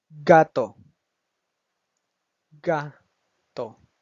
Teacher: el acento prosódico se encuentra en la sílaba ga, donde no tiene ninguna tilde, pero ahí es donde el lenguaje, la persona, el hispanohablante, va a hacer la fuerza de la voz.